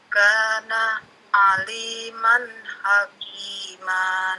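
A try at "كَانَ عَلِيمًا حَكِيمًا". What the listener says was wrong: Nah, Bu Nita, hakimah ya, ujungnya hakimah, panjang, ulangi.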